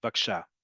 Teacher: instead of saying bevakasha, take out one of those, specifically the bet at the beginning, and say vaksha